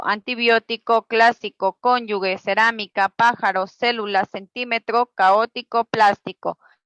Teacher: Las palabras esdrújulas llevan el acento o mayor fuerza de voz en la antepenúltima sílaba.